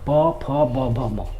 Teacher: ओठ जो है आपस में सट रहा है, यानी ओठ की सहायता से हम लोग इसका उच्चारण कर पाते हैं, इसलिए इसको हम लोग ओष्ठ्य वर्ण कहते हैं।